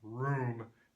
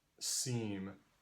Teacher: the oo sound in room is further back in your mouth than the e sound in seam. And if you go back and forth between making those sounds, ooey, ooey, ooey, you can feel your tongue going forward and backwards.